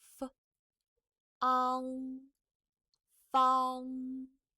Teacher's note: Okay, remember that the time of initial, the time of pronunciation of initial is more shorter than the final. So final has a longer pronunciation time, but the initial is very short.